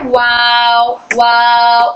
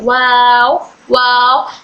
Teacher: होठों को गोल राउंड करके बोलते हैं। ये सॉफ्ट और हल्की हवा के साथ बोला जाता है। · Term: होठों की गोलाई